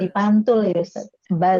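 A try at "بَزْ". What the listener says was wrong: tidak pantul, tidak pantul, tidak memantul, tapi dia baz, gitu ya. Baz, tidak ada z-nya, tidak ada z-nya, lurus aja.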